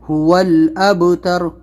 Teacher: با کے اوپر قلقلہ کرنا ہے، اس کے اوپر جزم ہے، هو الابتر، هو میں قلقلہ نہیں کرنا ہے، هو الابتر۔